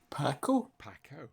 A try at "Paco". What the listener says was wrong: Paco. No, not Paco. Paco. Long pa. long A. Paco. Like taco.